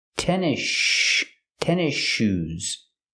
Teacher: The S is silent, and you link to the next sound, the sh sound in shoes.